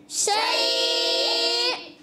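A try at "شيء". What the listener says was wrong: شیء. حمزہ کی ادائیگی عین کی آواز نہیں آئے گی.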